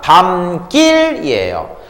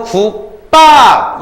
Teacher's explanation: 사이소리는 앞 글자가 울립니다. 하지만 된소리는 앞 글자가 안 울립니다.